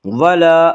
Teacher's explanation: الف مدہ کو 1 الف کے برابر کھینچ کر پڑھیں گے